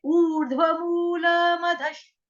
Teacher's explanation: श शलगम वाला, शबरी वाला जो है वो आधा है। विसर्ग का उच्चारण जो होगा वो श के साथ करेंगे, हलंत श से